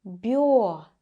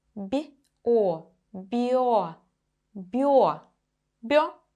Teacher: It's always soft b and then the sound o.